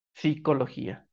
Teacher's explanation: para una facilidad de pronunciación se elimina la p y se pronuncia psicología